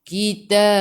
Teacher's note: Bila berhenti dengan huruf ba, huruf qalqalah ba judah kotor, ba jim dal qafta dan tak ada baris sabdu, namanya qalqalah kubra. Jadi berhenti dengan besar. Qalqalah kubra nama dia.